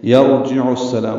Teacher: عین کو السلام کی سین سے ملا دیں گے